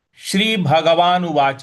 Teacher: उवाच च के बाद हल्का सा अ भी आना चाहिए उवाच क्योंकि यहां पे कोई हलंत नहीं है।